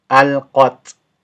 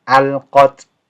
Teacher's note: Now this is a light t sound, okay, light t sound, but I'm not doing a bounce.